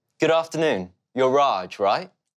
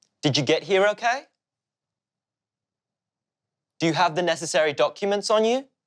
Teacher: because it is a yes no question we use a rising intonation to signal this type of question